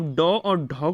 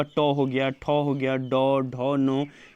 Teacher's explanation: अगर आप डॉ और ढौ को बोलते हैं तो आपकी जीभ डायरेक्ट जाकर के मूर्धा से टकराती है। तो ये दोनों शब्द जो हैं मूर्धन्य व्यंजन हो गए।